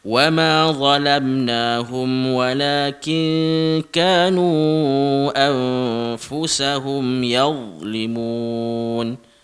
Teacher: Makhraj huruf dha kita sebut lidah kita dekat dengan gigi atas tu, dha di belakang gigi atas